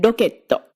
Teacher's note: an R formed with just the tip of your tongue, hitting your alveolar ridge right between where you say D and L